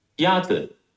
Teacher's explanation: is pronounced with a first tone. The first tone is a high-level tone.